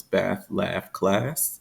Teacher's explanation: in general American English this is merged with the Trap lexical set